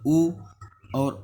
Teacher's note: कंठ ओष्ठ से ओ और औ का उच्चारण करते हैं